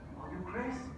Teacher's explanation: It's a creditable job, but it's a little marred by some West Indian intonation.